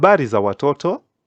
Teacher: you can hear my tone is going higher so that it can be a question